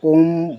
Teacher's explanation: प्लुत स्वर जिनके उच्चारण में तीन गुना समय लगे। यानी कि ह्रस्व में एक मात्रा का समय लगता है।